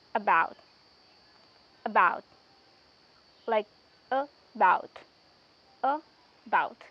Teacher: When we say about, we stress about more and a or just a little, like we pronounce a very softly, and it sounds like about, and that sound is called schwa sound